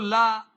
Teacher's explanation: पार्श्विक का मतलब है आसपास से प्राणवायु का निकल जाना। तो ला जो ध्वनि है ये पार्श्विक ध्वनि है।